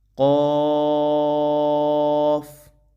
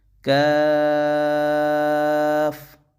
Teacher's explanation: قاف موٹا کر کے پڑھیں گے، کاف باریک پڑھیں گے